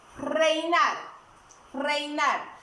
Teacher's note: la E y la I, vocal abierta más vocal cerrada, es un diptongo decreciente